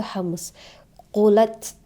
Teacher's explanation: udara keluar sedikit dari mulut karena ada ta mati di sana